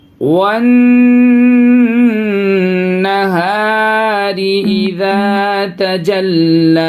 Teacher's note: یہ واو کو یہ نون میں ملائیں گے اور نون میں غنہ کریں گے. یہ الف مدہ ہے، یہاں پہ بھی الف مدہ.